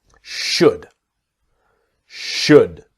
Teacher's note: The important thing is the L is silent. A lot of people see the L and want to say should.